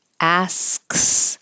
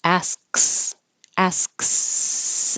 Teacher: I'm making an S appear, and then up for the K, and then immediately to the S. Asks, asks, and then keep the airflow going for stew, and then put your tongue up for the D in position.